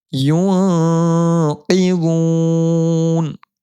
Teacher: نون ساکن کے بعد اخفا کے 15 حرفوں میں سے قوف آ رہا ہے. نون ساکن کی آواز کو ایک الف کی مقدار ہم ناک میں چھپا کر پڑھیں گے